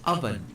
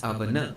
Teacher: Notice that both end with the sound n but with two different marks. The first one is avan. There's a hard stop at the end. But the second word is avana. There's this half u sound. This hard stop in Malayalam is called a chillu, while this half a sound is virama.